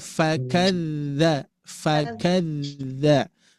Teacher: Di bibir bawah ketemu dengan gigi seri atas. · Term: huruf fa